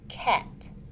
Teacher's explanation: made using the tongue and the roof of the mouth it is a stop sound and is voiceless the vocal cords do not vibrate